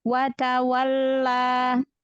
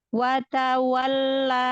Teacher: panjang dua harakat kalau dia wasal maka jadi Mad Jaiz ya Maka jangan terlalu panjang watwalla dua harakat aja